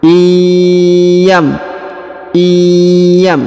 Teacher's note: Huruf nun sukun bertemu dengan ya bertasdid, maka huruf nun sukunnya menghilang dan melebur ke huruf ya, didengungkan dan disamarkan